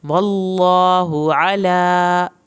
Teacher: इसकी हा की पेश को लंबा नहीं खींचना, आइन को हल्क से पढ़ना है। अला खड़ी ज़बर को आपने खींच के पढ़ना है।